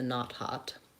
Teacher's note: It's an ah, it's an open back vowel. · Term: ah vowel